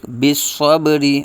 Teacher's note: کے با ساکن ہے، صب با ساکن میں قلقلہ کریں گے، را کے نیچے زیر ہے، را باریک ، بالصبری اور آگے وقف ہے تو را کو ساکن کریں